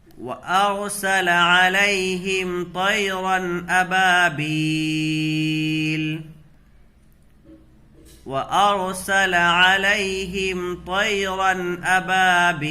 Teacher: रा को पुर पढ़ेंगे इसलिए कि रा साकिन से पहले ज़बर की हरकत है, इसको मोटा करके पढ़ेंगे